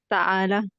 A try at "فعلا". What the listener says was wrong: نہیں، فعلا، فا کے بعد عین ہے، ساکن ہے، فعلا، مرضا،